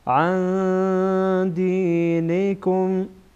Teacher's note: يردوكم عن دينكم عن بعد از نون ساکن دال آمده. دال از حروف اخفا، اینجا نون ساکن اخفا میشه